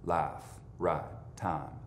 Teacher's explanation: In a lot of the South and in West and Central Texas, that vowel gets completely smoothed out so that it's not a diphthong anymore, but just a long sound